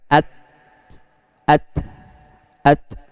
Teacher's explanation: Salah satu sifatnya adalah hamas. Maka nafasnya aja yang mengalir tanpa ada suara yang mengalir. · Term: huruf ta